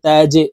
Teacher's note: এই জিমকে আমরা নিচের দিকে ধাবিত করে ধাক্কা দিয়ে উচ্চারণ করব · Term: কলকলার হরফ